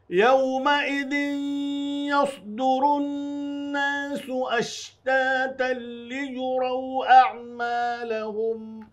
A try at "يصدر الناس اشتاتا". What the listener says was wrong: يصدر، آپ دونوں نے سین پڑھا ہے اس کو، ناظرین دھیان دیں گے، سواد پر ہے، یس پر نہیں کریں گے تو سین ہو جائے گا اور بہت بڑی غلطی ہوگی.